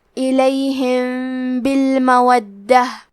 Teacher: اخفاء کا معنی ہے چھپا دینا تو ہم میم ساکن کو چھپاتے ہوئے اور غنہ کے ساتھ یہ حکم کو ادا کریں گے · دال پہ تشدید ہے تو ہمیں 2 حرف کے برابر دال کو پڑھنا ہے